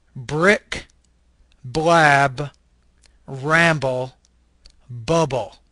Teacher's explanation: this is a bilabial stop Voice consonant